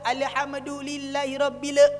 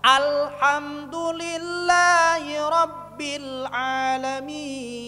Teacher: karena lam sukun bukan huruf Qalqalah matinya tegas